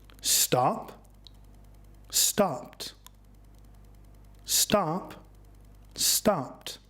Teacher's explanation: Noticed ed comes after the unvoiced p sound, so it is pronounced as t. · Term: t sound